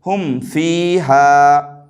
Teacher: میم ساکن کی آواز کو دکھا کر کے پڑھیں گے، ناک میں چھپائیں گے بھی نہیں اور ناک میں روکیں گے بھی نہیں، یعنی غنہ بھی نہیں کریں گے جس طریقے سے ادغام شفوی میں ہوتا ہے، اور نہیں اخفا کریں گے جس طریقے سے اخفاء شفوی میں ہوتا ہے، بلکہ اظہار کریں گے جس کو اظہار شفوی کہتے ہیں، یعنی میم ساکن کی آواز کو دکھا کر کے جلد پڑھیں گے۔